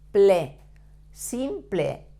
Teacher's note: you have to pronounce the P, L, E, like ple, not like in English that is pol or sample.